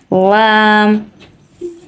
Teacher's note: লাম কে জিভের পেট দিয়ে উচ্চারিত করতে হবে তালুতে লাগিয়ে